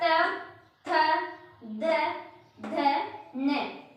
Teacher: हमारी जीवा दांतों का सहारा ले रही है और प्राणवायु का प्रेशर भी दांतों पर फील हो रहा है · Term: दंत्य